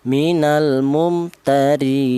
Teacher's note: Yang pertama namanya tul yaitu boleh dibaca tul. Tul itu artinya panjang. Panjangnya tiga alif atau enam harakat atau enam ketukan